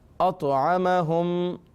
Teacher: طا حروف قلقلہ میں سے، لہٰذا آواز میں جنبش پیدا ہوگی۔